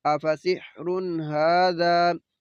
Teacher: तो ये तो है एक ज़बर और साथ में अलिफ मद्दा है, तो इसको वक़फ़ की हालत में हाज़ा ऐसे ही पढ़ना है। इधर नून तनवीन, बाद में हा, तो गुन्ना नहीं करेंगे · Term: इजहार